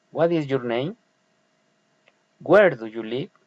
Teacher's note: friendly interest politeness rising intonation